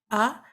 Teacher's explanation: So you start with the you start with the closed vocal cords and then you open it at the end, because fatha means you need to carry on with the sound, you need to produce the sound.